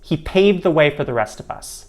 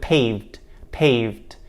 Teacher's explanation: you'll notice that you don't really hear a d sound like you would expect with paved paved instead we say pave the he paved the way for